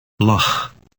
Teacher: Dutch L is similar to an English L, except that the tongue is slightly more forward.